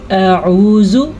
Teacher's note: پہلے حمزہ کی آواز پھر عین کی نکلے گی